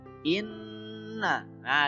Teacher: jadi nunya harus didengungkan dan ditahan dulu jangan langsung Inna hot tapi internal bu ya disitu Nyonya harus